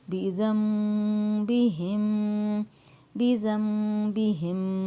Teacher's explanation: نون ساکن کی آواز کو ہم نے میم میں بدل کر پڑھنا ہے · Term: اخفا مال غنہ